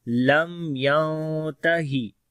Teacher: نون ساکن کے بعد آگے اخفا کریں گے یہاں پر